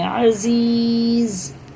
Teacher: اور زا کو ظاہر کر کے سخت پڑھیں گے